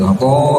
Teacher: ujung lidah yang menempel ke langit-langitnya tapi agak di tekuk sedikit dicondongkan sehingga yang menempelnya punggung lidah sehingga Terdengar agak cadel